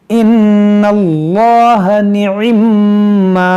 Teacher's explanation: इसमें जलालत से पहले ज़बर है तो इसको हम मोटा करके पढ़ेंगे